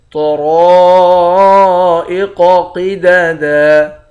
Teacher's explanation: طا، را، قاف اور اس قاف، ان چاروں حرف کو موٹا پڑھیں گے۔ را کے بعد الف ہے، الف حرف مدہ ہے، ایک الف کی مقدار کھینچ کر بھی پڑھیں گے۔